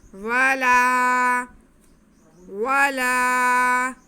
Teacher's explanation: لام کے کھڑا زبر کو ہم ایک الف کے برابر کھینچیں گے